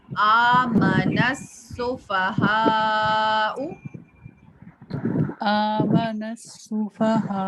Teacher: یعنی اس میں نون کو ہم سین جو تشدید والا ہے اس سے ملا دیں گے